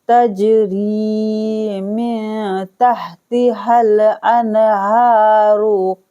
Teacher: रा को बारीक पढ़ेंगे ज़ेर होने की वजह से